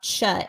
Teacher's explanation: it can be very complicated because when you're talking about cha it's like you're doing sh but you need to add kind of a t before it